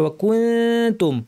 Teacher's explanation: ওয়া কুনতুম, নুন সাকিন তা ইখফা, অর্থাৎ জিহ্বাকে তা দাঁতের উপরের দাঁতের গোড়ার কাছাকাছি নিয়ে নাক থেকে গুণনা করতে হবে